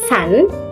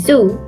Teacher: The sound S in sun is voiceless, while Z in zoo is voiced.